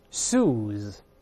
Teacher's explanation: 注意后面是浊辅音